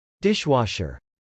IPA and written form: dˈɪʃw.ɑʃɚ (dishwasher)